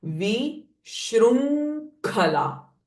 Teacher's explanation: So nasalized sound of ng and kh coming together.